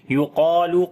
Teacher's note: قاف اور الف دونوں کو موٹا پڑھیں گے، قا کو لمبا بھی کریں گے ، الف مدہ ہے، یقالو ھذا الذی، ہا کو لمبا کریں